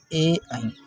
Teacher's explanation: ए ऐ का उच्चारण करने में कंठ और तालव्य दोनों स्थानों के माध्यम से उच्चारण होता है ए और ऐ का। क्योंकि ए भी संयुक्त स्वर है और ऐ भी संयुक्त स्वर है।